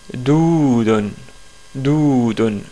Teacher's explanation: c'est le del qui est prolongé et la lettre waw utilisée ici comme voyelle longue